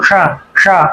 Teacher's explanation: ये मूर्धन्य शकार है, इसमें जीभ ऊपर जाती है मूर्धा की ओर